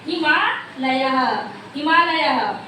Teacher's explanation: अ धन आ बराबर मिलके दोनों क्या हो जाएंगे? बड़ा आ, यानी दीर्घ वर्ण हो जाएगा।